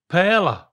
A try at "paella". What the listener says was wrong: It really needs an I. So it's not a silent I, it's an invisible I. Add an invisible I in there. But the L's are a Y. It's Spanish, I guess.